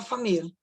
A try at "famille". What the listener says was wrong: Isso, você não vai falar o le, família, tá? Não vai ter o som do L ali, tá?